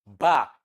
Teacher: Ba is a voiced bilabial plosive.